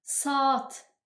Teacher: yəni sat demirsən, saat A hərfini uzadırıq. Burdakı iki nöqtə də a hərfinin uzun tələffüz olunduğunu göstərir.